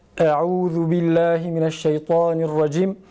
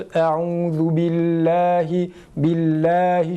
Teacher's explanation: Bu istiaze cümlesinde Allah lafzının lamı ince okunur.